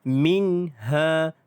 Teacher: hukum nun mati bertemu dengan huruf ha. Huruf ha, maka dipanggil sebagai izhar halqi. Di sini tidak ada dengung. Bacaan jelas tanpa dengung.